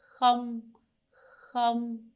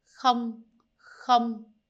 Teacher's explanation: KH, we have the K and the H pronounced at the same time. So it sounds very similar to the H sound in German or in Dutch. We have, however, in Vietnamese, it's going to be a little bit softer.